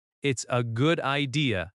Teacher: The s connects to a. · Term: linking